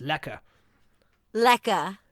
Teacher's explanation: we don't pronounce the r